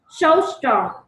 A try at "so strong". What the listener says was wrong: So strong. Sao chị nghe là sâu nhỉ? Sâu. Sâu. Sâu. Em đọc là sâu hay là sâu? Sâu hay là sâu? Cái trước hay cái sau? Sâu và sâu.